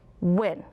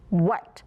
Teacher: If you feel that puff of air, then it has the WH. If it doesn't, then it's just a W.